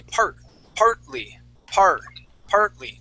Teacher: we jump right over that t that t is gonna be silent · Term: t is silent